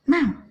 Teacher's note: tone keempat ada yang diucapkan dengan tone paling tinggi kayak orang marah. Ya, menyentak.